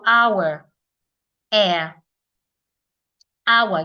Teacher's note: are silent the H sounds there are silent it means that when we're pronouncing the words we should not hear the sound of the H